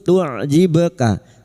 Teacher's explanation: Huruf ain sukun tu'jibka. Huruf ba sukun yang mati asli di tengah kalimat qalqalah sughra.